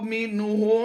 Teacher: نون ساکن کے بعد ہا حروف حلقی میں سے ہے، تو یہاں پر ہم نے اظہار کرنا ہے، غنہ نہیں کرنا۔ تو اب ملا کر پھر پڑھتے ہیں، اس لام کو بھی فوکس کیجئے گا اور اس لفظ کو بھی فوکس کیجئے گا۔